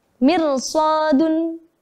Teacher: Tapi habis itu diikuti dengan huruf isti'la, maka tetap harus dibaca tafkhim menjadi mirsadun